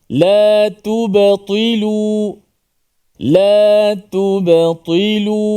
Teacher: Perkataan la tubtilu ini ta sahaja yang dibaca dengan tebal yang berbaris di bawah.